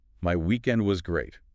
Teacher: Go ahead and say it. Notice how emphasis lands really heavily on the word great. Try to raise your pitch slightly on that word.